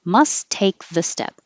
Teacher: don't say the t on must just say the T on take